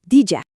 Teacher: la d más la y que se transforma en una j. Por eso diju se oye como dija.